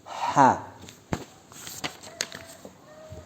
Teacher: Makharijul hurufnya bertempat pada tengah tenggorokan.